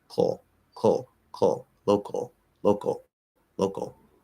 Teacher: you can go straight from the k into the the l